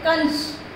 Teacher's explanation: अनुस्वार में हम क्या करते हैं, मुंह से ज्यादा आवाज निकालते हैं नाक से